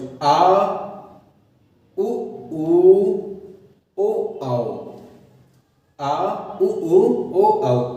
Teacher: पश्च स्वर जिन स्वरों के उच्चारण में जीभ का पश्च भाग मतलब पिछला भाग है वो ऊपर उठता है।